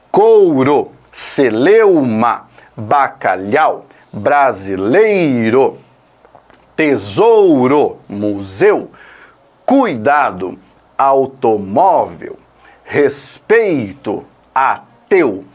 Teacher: Ditongo oral ressoando na cavidade oral, exclusivamente.